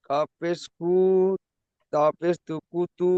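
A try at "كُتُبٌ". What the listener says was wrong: কাপের কু টান হবে না জি, হারাকাত, পেশটি হারাকাত বিনা টানে পড়ে। কুতু তাইও টান হয়ে যাচ্ছে, কাপটি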